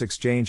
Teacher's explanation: size of the syllable indicates where the accent or stress is in this case the accent is in the second syllable